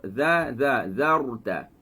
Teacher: Ini ada ra mati. Bila ra mati, kita sebut zarta. Angkat lidah kepada gusi. Gusi yang ada yang kesat tu.